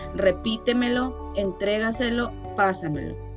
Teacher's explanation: llevan el acento en la sílaba anterior a la antepenúltima, la cuarta, empezando por detrás